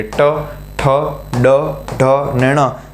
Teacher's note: દાંતનો પાછળનો ભાગ એનાથી ઉપર ઉપર તાળવું એનાથી ઉપર મૂર્ધા તો મૂર્દામાં જ્યારે જીભ સ્પર્શે ત્યારે ત્યારે જે વ્યંજન નીકળે એને કહેવાય મૂર્ધન્ય